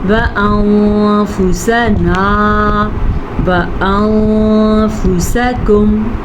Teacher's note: نون ساکن کے بعد فا حروف اخفا میں سے ہے تو ہم نے یہاں پہ اخفا کیا ہے، یہاں بھی اخفا.